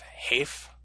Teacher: Next we have a phi, which again was originally an aspirated P, but now we say just like F, like in English PH.